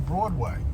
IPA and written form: ˈbrɔːdweɪ (Broadway)